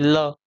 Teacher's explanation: इसके उच्चारण में जीवा जो है दांतों के पिछले भाग को जो है स्पर्श करती है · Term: दंत्य